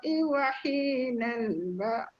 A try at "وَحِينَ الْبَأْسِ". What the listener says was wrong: Sin tu bunyi tak dengar. Bas.